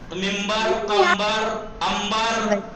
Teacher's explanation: नून साकिन के बाद बे है तो नून को मीम से बदल देते हैं। इसे कहते हैं इक़लाब, इसे कहते हैं इक़लाब, कल्ब करना, नून को मीम से बदल दिया।